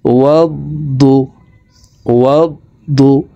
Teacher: দদের উপরে তাসদিদ আছে, তাসদিদওয়ালা হরফ দুইবার উচ্চারণ করিয়া পড়িতে হয়।